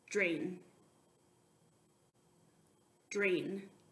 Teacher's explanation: der blend now this one can actually get very tricky because when you say the dr sound really fast at the beginning of words it can sometimes be confused with the J sound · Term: dr blend